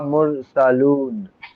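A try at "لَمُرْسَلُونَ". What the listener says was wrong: টান দিও না। লামুর সালুন, সালুন না, লামুর সালুন। টান দিলেই মানে আলাদা হয়ে যাবে। লামুর সালুন।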